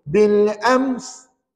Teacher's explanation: Bunyi mim dulu, tutup bibir dulu, lepas tu baru bunyi s. Gitu. Bil ams.